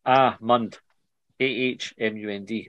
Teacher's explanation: The word almond is pronounced ahmund, ahmund, with emphasis on the first syllable. It rhymes with words like calm and palm.